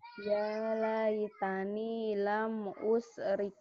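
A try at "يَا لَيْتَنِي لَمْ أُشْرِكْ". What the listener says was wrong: Virus rehannya udah nyebar tuh. Bukan usrik. Usrik. Virus rehan itu enggak bisa shin gede ya. Udah kemasukan ya, virus rehan.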